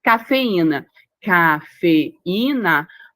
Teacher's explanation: Você tem o I aí que é tônico. Você tem a vogal i sendo tônica, sendo forte e que forme ato com a vogal da sílaba anterior. · o e ficou em uma sílaba, o i ficou em outra sílaba. Então você tem aí iato, você tem vogal, vogal está acompanhado aí da consoante S?